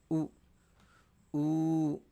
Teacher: పెదాన్ని ఆ విధంగా ముందుకు పెట్టి పలికితే మాత్రమే ఉ ఊ అనేటువంటివి వస్తుంది . అయినప్పటికీ పెదాల్ని కలపవలసిన అవసరం లేదు ఎందుకంటే అవి స్వతంత్రాలు కాబట్టి వీటికి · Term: ఓష్ట్యాః వర్ణాః